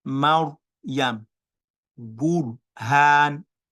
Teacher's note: Protruded to the front to pronounce the raw. So the raw sukun was pronounced while my mouth was protruded.